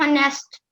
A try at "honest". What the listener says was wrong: Honest. The word is honest. H is silent. It's not honest, it's honest.